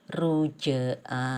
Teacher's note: Jadi dibaca mantul ringan aja gitu ya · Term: qalqalah